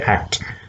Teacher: act cannot be completely released because other before that you know it has to close again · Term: incomplete plosives